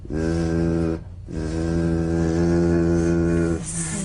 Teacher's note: The Z vibrates in that very small open space between the tongue and the upper teeth. Right in here.